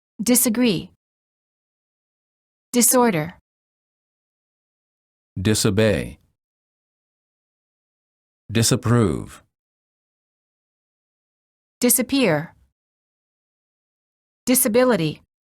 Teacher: the s in the prefix dis is pronounced as s and not as z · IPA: /s/